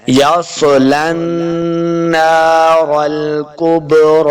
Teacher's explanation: یصلی النار الکبریٰ، یس سواد جو ہے یہ حروف مستعلیہ سے ہے، یعنی وہ حروف جو ہمیشہ موٹے پڑے جاتے ہیں ان میں سے سواد ہے۔ یس سواد کو پر پڑھیں گے، موٹا کر کے پڑھنا ہے۔